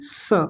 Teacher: जीभ नहीं लगेगी। इसमें होता क्या है कि दोनों दांत आपस में मिल जाएंगे और दांतों के बीच में से हवा बाहर आएगी। स बस इतना बोलना है। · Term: दंत्य सकार, दंतीय सकार